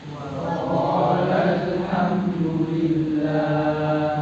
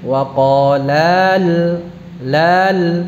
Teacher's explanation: Jadi lamnya pendek. Kenapa? Alifnya telah digugurkan, telah dihilangkan. · qala ini asalnya kalau diucapkan terpisah panjang, namun kalau dibaca wasal bersambung pendek